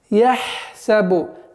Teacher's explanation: Ха – гортанный звук, и нужно на него акцент делать. Почему? Потому что после идущей буквы у нас свистящий син, и поэтому нужно обращать внимание, чтобы свойство свист оставалось полноценным.